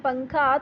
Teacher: نون کو پوری طرح سے آپ ادا نہیں کرتے، آپ زبان جو ہے وہ تالو پہ نہیں لگاتے۔ اس کا مطلب کیا ہوا کہ آپ زبان سے نون کا جو جگہ ہے جہاں سے نون نکلتا ہے وہ اس کو ہٹ نہیں کرتے، بلکہ بس ناک سے غنہ ہی آواز نکلتی ہے، تو اس کو کہتے ہیں اخفا، یعنی مخفی نون ادا کرنا۔